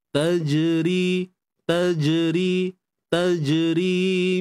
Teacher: Jim yang sukun tuan-tuan, di sini terdapat sifat lantunan yang disebut قَلْقَلَةٌ صُغْرَى. Untuk jim bila kita matikan, pastikan tidak ada bunyi percikan